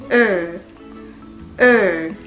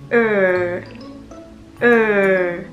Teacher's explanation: 需要你把你的舌尖稍稍的往上翘，在这个牙齿后面的这个部分翘起来之后呢，不要触碰到牙齿后面这个部分。然后在这个过程当中呢，让声带震动